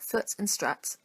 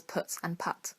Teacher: they mostly haven't undergone what linguists like to call the foot strut split where both words have the vowel sign that's in foot so